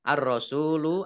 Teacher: Alif Lam Syamsiah karena tidak dibaca langsung masuk ke huruf berikutnya yaitu ro